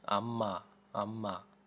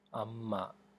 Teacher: notice I'm emphasizing the m so this is going to be a doubled M sound